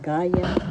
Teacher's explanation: first syllable has the accent